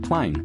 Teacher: Australians often really draw their vowels out like in the example of plane where that long a sound stretches from R to A to I.